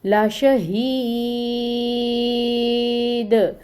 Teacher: دال ساکن کے اوپر حروف قلقلہ میں سے ہے، قلقلہ کریں گے · یہ جو یائے مد ہے اس کو میں 6 کاؤنٹس کر رہی ہوں، کیوں؟ کیونکہ آگے وقف کرنا ہے ہم نے۔